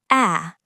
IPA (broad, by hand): æ